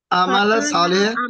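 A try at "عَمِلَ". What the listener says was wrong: अमेला, अमेला सालिहन, अमला नहीं है, अमेला है, ये देखें, ये मेरे भाई कि इसमें हम जेर आती है दूसरे हरफ के नीचे, और ये वो सब में वही चलेगी, क्योंकि आमेला है, सामिया है, आलिमा है, उसी तरह चलता है।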